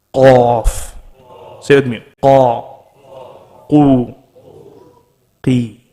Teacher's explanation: we know that qaf is the last part on top after the throat. When we say it, it's with a heavy sound.